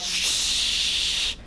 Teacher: the sound can come out continuously but there's friction in the air · friction in the air off like that right like that so the sound can come out continuously but uh it has to be kind of uh squeezed through some kind of narrow uh path in the mouth so causing friction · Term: fricative